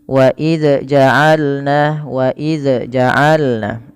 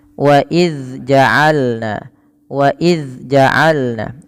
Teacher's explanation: ujung lidah menempel dengan Gigi seri atas sehingga wa ya dia tertahan daripada nafasnya tidak ada nafas yang dikeluarkan ya wa wa jaalna wa jaalna ya dan suaranya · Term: makhraj huruf Dal